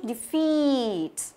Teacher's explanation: Chúng ta nhấn vào âm thứ hai. Tuy nhiên nghe kỹ chúng ta thấy là ngữ điệu nó vẫn đi xuống một chút